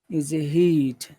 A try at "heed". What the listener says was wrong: Okay, you have to do that. Otherwise, I think you're saying hear or hit. I'm not sure which, but definitely not heed.